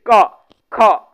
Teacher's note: क ख ये सब का उच्चारण कंठ से हो रहा है